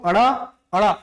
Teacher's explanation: जीभ आपको ऊपर की ओर उछलेगा, इसीलिए इसको कहा गया उच्छिप्त व्यंजन। और इसका एक और नाम है द्विस्पृष्ट व्यंजन। · ऐसा व्यंजन जिसका उच्चारण जीभ को उछालने से होता है।